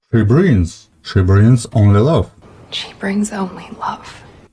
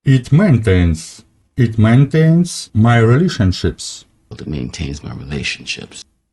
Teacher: If the verbs end in a voiced sound, then we pronounce z.